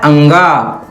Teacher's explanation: अंगा का उच्चारण जो है कंठ से तो होता ही है नासिका से भी होता है